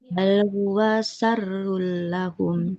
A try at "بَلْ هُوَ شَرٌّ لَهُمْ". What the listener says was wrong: Ini juga tidak huwa. Bal huwa syarrul lahum. Pendek kan huruf wawnya.